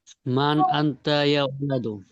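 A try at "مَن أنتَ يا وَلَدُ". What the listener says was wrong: মান আংতা ইয়া ওয়ালাদু, প্রশ্ন আওয়াজ তো থাকতে হবে, আপনি স্বাভাবিকভাবে পড়ে যাচ্ছেন। মান আংতা ইয়া ওয়ালাদু।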